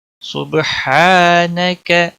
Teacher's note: سبحانک، صبح با پہ کلکلا ہوگا، ہا الف مدہ ہے، ایک الف کے برابر کھینچ کر پڑھیں گے